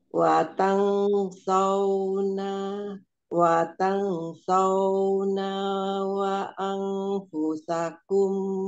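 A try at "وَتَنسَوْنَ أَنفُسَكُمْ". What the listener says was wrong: Anfusakumnya nggak ada wawunya Watasauna anfusakum wa antum.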